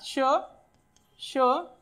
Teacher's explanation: फेकली जाते उष्णता जास्त निर्माण होते म्हणून त्यांना उष्मे म्हणतात किंवा याला दुसरं नाव आहे घर्षक म्हणजे घर्षण होतं आणि त्याच्यातून उष्णता निर्माण होते